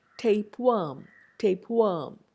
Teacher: a regressive or anticipatory change at word boundary involving a changed lip position · The per becomes lip rounded in tapeworm, tapeworm, under the influence of were, per changes.